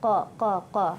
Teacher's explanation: makhrajnya huruf qaf ya, makhrajnya di pangkal lidah qa ya, jangan kul jadi kaf